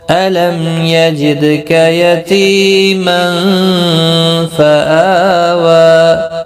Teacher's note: میم ساکن کے بعد یا آیا ہے، اظہار ہوگا، اظہار شفوی جس کو کہتے ہیں